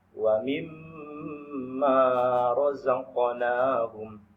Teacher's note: Tapi misalnya anak-anak kami menemukan di dalam Al-Quran, sewaktu baca ayat Al-Quran misalnya wa mimma razaqnahum, wa mimma itu wajib dibaca dengan gunnah, wajib dibaca dengan dengung sewaktu membacanya